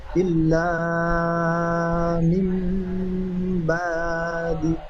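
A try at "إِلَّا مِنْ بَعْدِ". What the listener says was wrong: টান হবে না।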